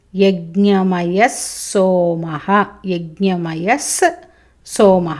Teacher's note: విసర్గ ఉంది సోమః సకారం ఉంది కాబట్టి విసర్గ సకారం అవుతుంది